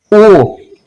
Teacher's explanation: मेरे होठों पे ध्यान दीजिएगा, ओ गोल बन रहा है ना, ओ लॉन्ग साउंड।